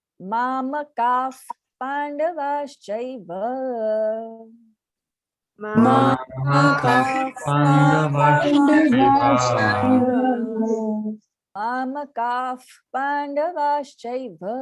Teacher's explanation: Mamakaf Mamakaf Pandavaschaiva. So the visarga takes on the sound of fa, and then you say Pandava.